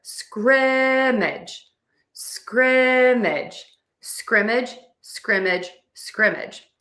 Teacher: I am stressing syllable number one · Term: stressing syllable number 1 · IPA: /ˈskrɪm.ɪdʒ/